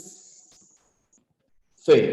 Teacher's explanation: Tu labio inferior hacia tus incisivos superiores. Y fíjate, ahí estamos produciendo un ruido. Ese ruido es el ruido audible, que se perciben con las consonantes.